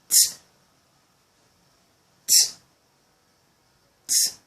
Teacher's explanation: The alveolar, we have sounds like t, t, t. When you produce it, the tip of your tongue goes to the back of your alveolar ridge.